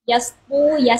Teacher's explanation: Sinnya tipis, to-nya tebal.